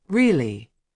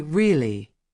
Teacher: When someone says really with a high tone, it means they are surprised. When they say really with a low tone, it means they already knew. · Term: inonation, intonation